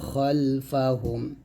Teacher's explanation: এখানে খাল না বলে খল মোটা করে বলবেন